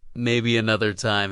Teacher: has a gentle fall at the end, like closing a book softly. It's not a full stop, it's a comma with kindness behind it.